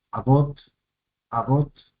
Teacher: La primera sílaba es abierta con la A, la segunda sílaba es cerrada por la TAP. Bot termina en consonante, sílaba cerrada. Sílaba cerrada, acentuada y tiene una vocal larga.